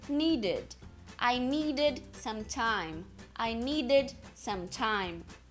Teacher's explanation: um verbo como Need Need você pronunciar need dois D seguidos Então você coloca uma vogal entre os dois D · você coloca uma vogal entre os 2 Ds. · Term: som de id